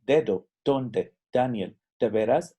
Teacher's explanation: la letra D es muy parecida a la letra T en inglés. Nuestra lengua toca el paladar